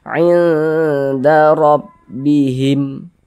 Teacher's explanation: Huruf ra memiliki harokat fathah, dibaca tabkhim, dibaca tebal. Nah, tebalkan huruf ra-nya.